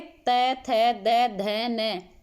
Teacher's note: जीभ कहाँ टच हो रही है, दांतों पर टच हो रही है, तो इसलिए कौन से व्यंजन हो गए? दंत्य व्यंजन हो गए।